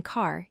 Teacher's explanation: uses a low back position. Your tongue pulls back low in your mouth. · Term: long A sound